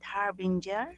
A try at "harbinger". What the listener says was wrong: Harbinger. Very good.